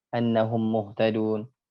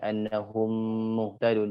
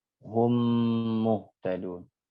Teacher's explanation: Yang idgham mimi ya harus dimasukkan mim yang pertama ke dalam mim yang kedua. Annahum muhtadun, harus didengungkan annahum muhtadun, jangan terburu-buru.